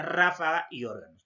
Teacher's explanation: Siguiente, las esdrújulas, simplemente la mayor fuerza de voz en la antepenúltima sílaba